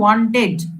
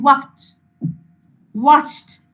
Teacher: ওয়ান্ট ওয়ার্ডটা পুরো উচ্চারণ করলাম তারপরে ইডিটা বলছি। বাট ওয়াক কথাটা পুরো উচ্চারণ করে কিন্তু আমরা ইডি বলছি না